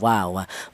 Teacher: Untuk huruf wawu keluarnya huruf berasal dari kedua bibir yang renggang, yang tidak nempel